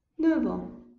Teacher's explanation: əgər 9 sayından sonra an, om, ör və yaxud autre sözü gələrsə, onda 9, 9 kimi oxunacaq, yəni oradakı F səsi V-yə çevriləcək. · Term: liaison